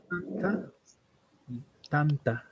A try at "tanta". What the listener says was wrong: Entonces, por ejemplo, aquí en esta parte no se ha notado la diferencia, ¿no? De lo que es anta y lo que es tanta, ¿no?